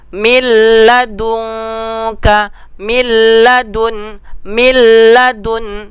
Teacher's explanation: Contohnya nun mati ketemu dengan lam, kita buat milladunka, milladun, milladun. Nun mati ketemu dengan lam, langsung baca, tidak berdengung, tanpa berdengung. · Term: idgham bilaguna